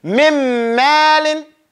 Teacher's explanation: The noon is not pronounced. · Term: idgham with gunna